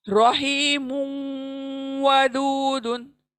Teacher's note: तो मुन को, मुन के नून को वाव में इदगाम कर देंगे।